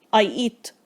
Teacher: Eat ends with a t sound that is completely unaspirated. يعني مفيش هوا بعدها خالص بيطلع.